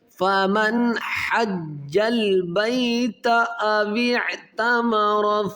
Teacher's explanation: گے، اس کو الگ کر دیں گے، ان یطوف بہما، فمن، یہاں پر غنہ نہیں کیا جائے گا کیونکہ نون ساکن کے بعد حروف حلقی میں ہا ہے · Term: اظہار